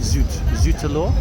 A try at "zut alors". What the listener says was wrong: Zut alors. Le E, en moins, c'est A, not E.